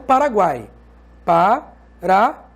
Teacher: Observe que guai é uma sílaba só. E nós temos o U, que é uma semivogal, o A, que é uma vogal, e o I, que é uma semivogal. Semivogal, vogal mais semivogal a gente chama de tritongo.